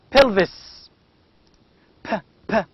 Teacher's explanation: it is a bilabial sound bilabial stop voiceless sound